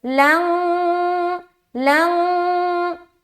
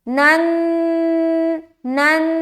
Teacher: جب ہم اخفا ادا کرتے ہیں نا تو ہماری زبان ہوا میں ہوتی ہے، لنگ. جب ہم غنہ کریں نن، ہماری زبان دیکھیں تو آپ ٹچ ہے، دانتوں میں ٹچ ہے